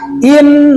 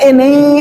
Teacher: kalau ada nun musyadadah, tolong ditahan dua harakat. In, begitu kan suaranya, jangan ini, salah.